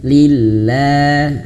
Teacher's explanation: lafaz jalalah ini dia bisa tipis kalau sebelumnya berharakat kasrah.